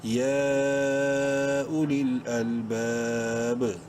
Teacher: اینڈ میں با پر قلقلہ ہوگا ساکن ہونے کی وجہ سے